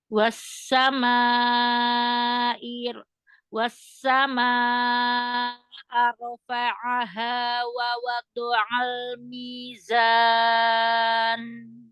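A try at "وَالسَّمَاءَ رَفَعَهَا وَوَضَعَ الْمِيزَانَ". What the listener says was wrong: Perhatikan wassama ke bawah yuk. Wassama rafa'aha wa wada'al mizan.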